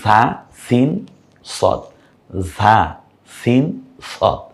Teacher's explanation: জিহ্বার আগা সামনের নিচের দুই দাঁতের আগার সঙ্গে লাগিয়ে